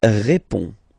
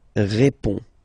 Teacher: final D is not pronounced. You only have this on nasal sound at the end.